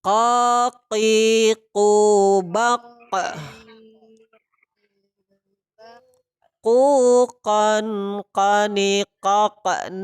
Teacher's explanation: huruf qof qaf ini tentu dari pangkal lidah dengan langit-langit atas huruf Qalqalah juga maka pantulkan sifatnya yaitu Qalqalah dan juga jahar khas tertahan kopiku bakal sama-sama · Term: huruf qaf